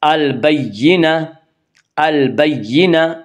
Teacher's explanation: گول تا وقف کی صورت میں ہائے ساکنہ بن جاتی ہے